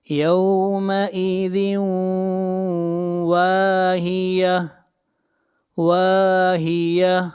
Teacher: یہاں پر تنوین کے بعد حروف یرملون میں سے واو ہے، ادغام مع الغنہ کریں گے